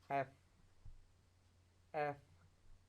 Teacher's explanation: आप अपने lower lips को अपर टीथ के साथ बाइट करें तो जो साउंड प्रोड्यूस होगा वो एफ का साउंड होगा